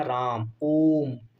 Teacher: प्लुत स्वर जिनके उच्चारण में दीर्घ से कुछ अधिक मात्रा यानी तिगुना समय लगता है।